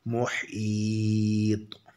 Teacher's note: तौ की आवाज़ टक्कर खाकर अलग हो जाती है, इसको क़लक़ला कहते हैं